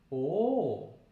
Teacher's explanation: we're going to be doing a vowel where the lips are rounded the corners of the lips come a little bit forward